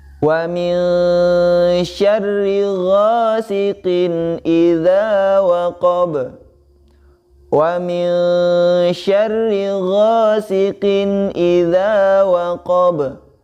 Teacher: Huruf ba termasuk huruf qalqalah, maka nanti di ujungnya dibaca qalqalah atau memantul.